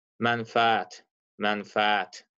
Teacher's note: Bəli, vurğu sonuncu hecaya düşür.